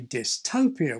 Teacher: Some speakers, like me, still treat this as having a boundary between dis and topia. So I say dystopia with aspirated T.